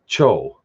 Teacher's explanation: So the C makes a TS sound, and the C with the hat on it, the letter cho, makes what would be in English a CH sound, or technically it's a TSH sound. If you write TSH in any English word in place of CH, you'll find it's pronounced exactly the same way.